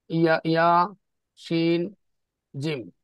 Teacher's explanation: 6 নং মাখরাজ, জিহ্বার মধ্যখান তার বরাবর উপর তালুর সঙ্গে লাগিয়ে